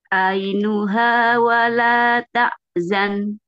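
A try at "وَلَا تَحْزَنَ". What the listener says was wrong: Nah, ini bukan A tapi H. Wa la tahzan.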